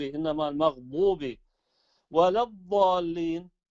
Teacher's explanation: الضاد أخت الصاد تخرج من طرف اللسان خلف الثنايا العليا، يعني عند اتصال اللثة بالأسنان من الأعلى، فيكون هناك طرف اللسان عند اتصال الأسنان باللثة من الأعلى و خلف الثنايا، ليس في المقدمة، يعني ما نخرج اللسان.